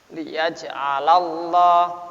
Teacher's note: Lam jalalah harakat fathah menghadapi lam jalalah, maka lam jalalah dibaca tafkhim.